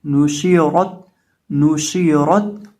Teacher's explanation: जो नून है इसके ऊपर पेश है तो इसको पढ़ते वक्त हम अपने होंठों को गोल करके पढ़ेंगे, और शीन का मखरज मैंने जिक्र किया था ज़ुबान का वस्त जब ऊपर मद्दे मुकाबिल तालु से लगता है तो शीन अदा होता है। और रॉ को यहाँ मोटा करके पढ़ेंगे क्योंकि रॉ के ऊपर ज़बर है